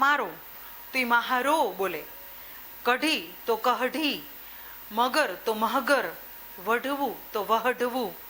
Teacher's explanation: ભીલી બોલીના કેટલાક લક્ષણો પણ આમાં જોવા મળે છે. હનો શ્રુતિલેપ થાય છે અને સાર્વત્રિક રીતે બોલાય છે